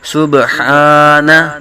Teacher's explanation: ہا کی بجائے ہا صحیح طریقے کے ساتھ حلق کے درمیان سے ادا کریں گے